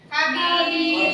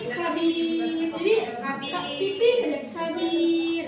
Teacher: ro-nya itu kan tidak tebal seperti mar itu kan terlalu tebal ya. Kalau ini kabir, jadi tipis saja kabir. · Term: tarqiq